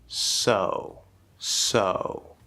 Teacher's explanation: the fully enunciated very clear perfect s sound in English so there's a lot of force lots of good air there's a whistle sound because of the position